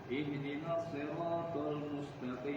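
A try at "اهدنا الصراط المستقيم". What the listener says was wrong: Ingat, so itu tasdid. Ihdinas siratal mustaqim. Ihdinas siratal, so berikan hak tasdidnya dan sifat rakhawanya. Mustaqim. Nah, rakhwa tetap kita berikan.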